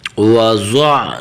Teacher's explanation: حرف ضاد کو موٹا کرنا ہے اور ضاد کی حرکت کو عین کے ساتھ ملانا ہے. ٹھیک ہے، واو زبر وا، ضاد عین زبر ضع، وضع.